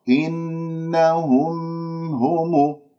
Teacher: إنهم هم، ميم مظهرة سمعتوها، إنهم هم، هذه أسمعها الميم المظهرة لأنه مخرجين في الميم، مخرج شفوي ومخرج خيشومي، لأنه إذا قطعت صوتها أنت أتيت فقط في مخرج واحد، والأصل أن تأتي بمخرجين الميم وكذلك النون.